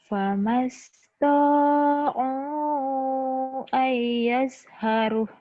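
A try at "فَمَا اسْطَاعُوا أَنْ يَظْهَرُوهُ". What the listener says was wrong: Panjang jadinya, jadi badal disukun. Karena matobi ketemu satu huruf hidup dihentikan.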